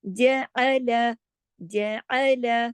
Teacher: جیم کو 1 حرکت، عین کو 1 حرکت، لام کو 1 حرکت، کسی کو بھی کھینچنا نہیں ہے